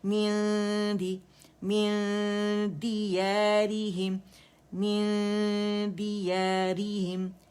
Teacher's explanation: نون اور دال کا مخرج بہت قریب قریب ہے. ٹھیک ہے، ٹچ ہو جائے گا تو اظہار ہو جائے گا، اور ٹک جائیں گے تو ادغام ہو جائے گا. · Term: اخفا